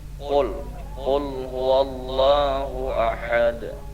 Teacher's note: Qul itu kalau bisa ditebalkan, karena qul itu qaf bukan ka ya.